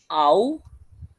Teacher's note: Daripada vokal depan rendah ke vokal belakang tinggi, au. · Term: diftong